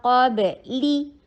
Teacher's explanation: میاں قاب، قاف کو ہیوی کرنا ہے، با کے اوپر قلقلہ. قاب لی، لام کے نیچے کسرہ، ای کی ساؤنڈ کرنا ہے، شارٹ رکھنا ہے